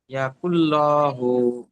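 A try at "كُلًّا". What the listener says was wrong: ল হবে না, লা, লাম যাবার লা।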